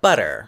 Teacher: that double T in butter gets reduced to a disowned and because it's between two vowels you have a little tap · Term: tapped R